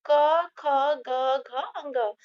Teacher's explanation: जो क वर्ग के व्यंजन होते हैं, उनका उच्चारण कंठ से होता है।